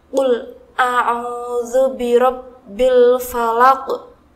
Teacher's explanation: Huruf qaf yang terletak di paling akhir dibaca sukun dengan pantulan yang kuat karena termasuk qalqalah kubra.